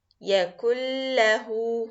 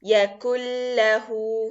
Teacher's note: But this idgham for lam, it will be complete idgham with no gunna, which means that you are going to put the noon and the lam together and mix them completely, as you cannot make difference between the sound of the noon and the sound of the lam. Both of them will be as one sound, and without gunna.